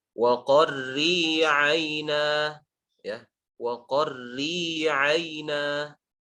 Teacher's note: Huruf ra yang berharokat kasrah maka dibaca tipis. · dan tipiskanlah huruf ra jika dia dikasrohkan